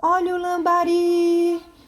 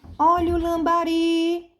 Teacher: Então percebes que foi uma sílaba que demorou mais na minha boca, foi o ri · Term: sílaba mais forte